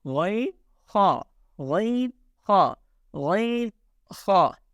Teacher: So Ghain and Ha pronounced from the first part of the throat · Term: halqi makhraj